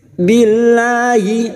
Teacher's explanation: lam jalalah yang sebelumnya kasr kita baca tarkik tipis · lam jalalah yang sebelumnya kasroh kita baca tarkik tipis. Billahi faqad dal sukun yang mati asli di tengah kalimat jangan lupa dipantulkan, namanya qalqalah sugro.